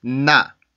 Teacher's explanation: 지금 소리를 들어보면 우리나라처럼 그냥 나 이렇게 소리가 나지 않고 나 앞에 은과 비슷한 소리가 살아있죠